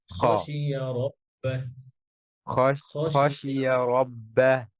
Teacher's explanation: খটা আরো ভিতরে হ্যাঁ গলার শেষ শব্দ